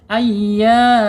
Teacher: Hanya ee makhrajnya keluarnya huruf ini ketika dia mad ya ada di tenggorokan sampai ke mulut saja tidak boleh mampir udaranya ke hidung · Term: mad thabi'i